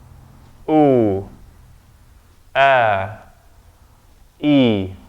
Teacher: The first thing I'm doing is that they're closed, then I open them to say the oo. But before that oo, my vocal cords are closed, there's a Hamza there.